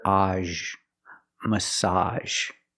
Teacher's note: Make the open ah sound, like hot and stop, plus the zh sound. Together, age.